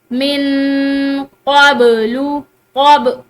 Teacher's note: बा को रोक कर नहीं बल्कि हिलाकर पढ़ेंगे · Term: कलकला